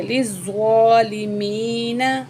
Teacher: زوا کو موٹا کر کے پڑھیں گے اور سختی سے بھی پڑھیں گے اور ایک الف کے برابر کھینچ کے بھی زوا کو پڑھیں گے